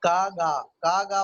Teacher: का गा बोलेंगे तो आपको लगेगा कि जबान पीछे से उठती है